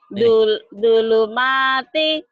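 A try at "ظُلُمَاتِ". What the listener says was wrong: Bukan pakai dal, pakai zo. Zulumati kegelapan, zulumat. Zolim, zu. Zu, zo, zulumat. Jangan dulu ya. Zulumati ya Bu.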